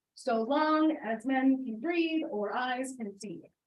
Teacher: So we're getting that da-dum, da-dum, da-dum. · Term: meter